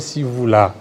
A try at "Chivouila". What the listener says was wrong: Chivouila. Chivouila, parce que les CI, l'Académie Louba, prononce Sachi, les TSHI a été déjà transformé pour les choses.